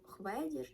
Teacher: 1909 році зауважував що зважаючи на те що звук ф у більшості українського народу вимовляється як хв перед голосними